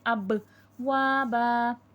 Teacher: قلقلہ کا قاعدہ لگے گا، آواز پلٹ کر سنائی دے گی